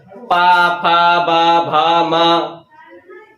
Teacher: ओंठ बंद हो रहे हैं तो ये सब हो जाते हैं ओष्ठ व्यंजन